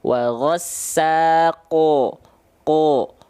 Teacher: karena huruf tebal, bunyi vokalnya O. Pangkal lidahnya diangkat.